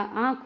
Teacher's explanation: हवा, नाक और मुंह दोनों से निकलती है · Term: अनुनासिक